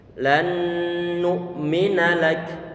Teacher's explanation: Nun pertama diidghamkan pada nun yang kedua, sehingga menjadi satu nun yang bertasydid dari segi suara. · Nun sukun bertemu dengan nun satu saja sudah ada unsur idgham, sudah ada unsur gunnah, sifat gunnah, ada denguan di sana. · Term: idgham mutamatsilain